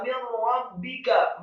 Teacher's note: Jazaa'an min rabbika, kata min rabbika, mimnya kasrah satu harokat, kemudian nunnya sukun, setelah huruf nun ada huruf ra yang tasydid, nun mati ketemu dengan huruf ra, hukum bacaannya adalah idgham